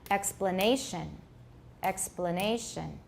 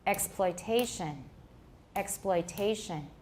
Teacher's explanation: Note that the difference in rhythm between explanation and exploitation is that the second syllable of explanation has a reduced vowel, but this syllable in exploitation has a full vowel · plen is reduced and ploit is not reduced. So it sounds more prominent.